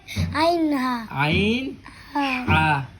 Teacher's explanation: দুই নাম্বার মাখরাজ হলকের মধ্যখান হইতে